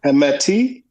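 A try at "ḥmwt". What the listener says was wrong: You gotta remember to put the W closer to the root, even though it ain't written closer to the root. Him wet.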